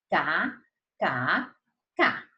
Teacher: Lá no palato mole. Lá pertinho da úvula, pertinho da campainha.